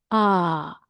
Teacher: a can be lengthened to be a. So, it's very long open vowel.